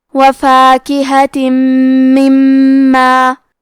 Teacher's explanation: مما میں میم پہ تشدید ہے تو ہم 2 حرف کے برابر میم کو پڑھیں گے، کیونکہ تشدید کی اصلیت 2 حرف ہے.